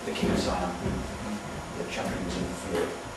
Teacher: In natural speech, it would be schwa, wouldn't it?